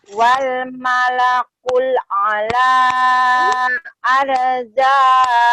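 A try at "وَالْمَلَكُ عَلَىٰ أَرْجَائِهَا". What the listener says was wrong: Bukan kul tetehnya, tapi ku saja. Wal malaku Wal malaku ala arjaiha.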